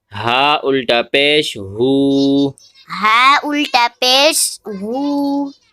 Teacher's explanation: ہا الٹا پیش ہے، ایک الف کی مقدار کھینچ کے پڑھیں گے